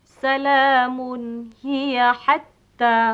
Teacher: Hendaklah dibaca dengan a nyata tanpa didengungkan. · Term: izhar halqi